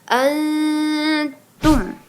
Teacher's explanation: Anya disebut dengan ikhfa hakiki. Nun mati bertemu dengan huruf ta jadi samar ke huruf ta.